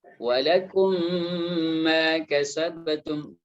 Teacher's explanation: Mim yang pertama yang sukun itu dimasukkan kepada mim yang kedua sehingga dia menjadi satu dan kemudian diberikan tanda tasydid. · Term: idgham